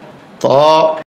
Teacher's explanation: ত এই হরফটি 1 আলিফ পরিমাণ লম্বা হবে, জিহ্বার আগা উপরের দাঁতের গোড়ায় ভিতর দিয়া ধাক্কা দিয়ে মুখ খুলে দিবে।